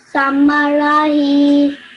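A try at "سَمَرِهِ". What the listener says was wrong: Okay, over here, this has a kasra underneath it, so you pronounce as ri, not ra. Okay, so samarihi.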